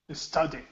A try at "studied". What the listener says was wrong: So the u in English rarely will make an oo sound. Very rarely. So yeah, here it's going to be studied.